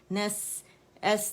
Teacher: سین میں ہمس ہے، ہمس کا مطلب ہوا فیل ہوگی